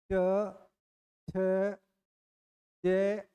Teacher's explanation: स्पर्श संघर्षी व्यंजन यानी जीवा स्पर्श भी करती है स्पर्श के साथ संघर्ष भी करती है